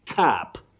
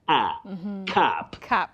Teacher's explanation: Cap with a short, low front sound.